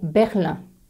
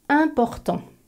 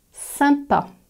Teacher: du bas et maintenant tu dois étirer les lèvres pour sourire tu remontes légèrement l'arrière de la langue l'air va alors passer par le nez et par la bouche et voilà tu sais prononcer la nasale 1 le son 1